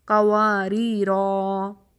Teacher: اگر تو ہم وقف کریں گے یعنی سٹاپ کریں گے تو پھر ہم قواریرا 2 حرکت پر کھینچیں گے. کمپلیٹ 2 کاؤنٹس قواریرا، ٹھیک ہے، یہ رکتے وقت while stopping.